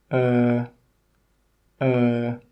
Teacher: this sound is a long sound and it comes from the very middle of the mouth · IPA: ɜ